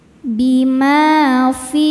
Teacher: Fi hukumnya mad thobi'i zohiri karena ada ya sukun sebelumnya kasrah. Cara bacanya huruf fa dipanjangkan dua harakat.